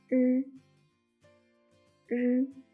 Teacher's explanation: When pronounced r, the tip of the tongue is upturned, close to the front of the hard palate, leaving a narrow slit